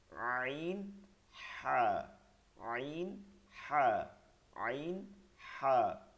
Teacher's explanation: আইন, হা, কণ্ঠনালীর মধ্যখানে নিয়ে পড়তে হবে, কণ্ঠনালীর মধ্যখানে, কণ্ঠনালীর মধ্যখান থেকে।